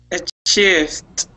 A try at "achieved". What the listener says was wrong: Not with a T, but D. Achieved. Achieved. Achieved.